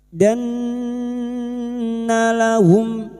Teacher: nun yang bertasdid ghunnaah musyaddadah kita dengungkan selama 3 harakat